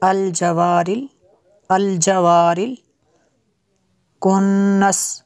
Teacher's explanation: नून में शद्दद है इसलिए गुन्ना हुआ